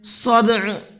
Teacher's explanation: دال کے اندر قلقلہ کریں گے اور عین پر وقف کریں گے تو اس کو ساکن کر دیں گے